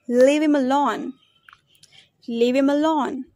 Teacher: The first word is him. The weak form of him is am.